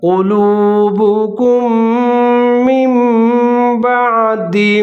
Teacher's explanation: اس کے اینڈ پہ میم ساکن ہے اور جو میم بعد اس کے شروع میں جو میم مشدد ہے دونوں کو ملا کر پڑھنا ہے آپ نے، اور یہاں پر بھی ادغام کرنا ہے ود غنّہ غنّے کے ساتھ۔